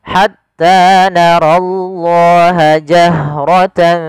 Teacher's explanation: pada lafal narallaha, ro-nya dibaca dengan tebal, di sini diwarnai dengan warna biru menandakan dia ro-nya dibaca dengan tebal.